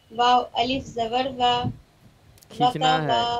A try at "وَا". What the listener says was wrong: کھینچنا ہے واو الف زبر وا.